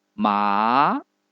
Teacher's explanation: 第二声是由3度升到5度，即所谓的中声，从中间越升越高，最后升到顶